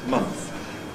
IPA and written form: mʌntθ (month)